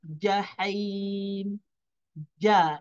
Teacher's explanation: Tengah lidah diangkat ke atas langit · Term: huruf Jim